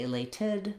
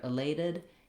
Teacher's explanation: I did rewrite the T here with the letter D, just because it's a flap sound in this word, meaning I don't say elated, but rather elated. It's a light little voiced sound. It's not exactly the same as a D, it's a flap.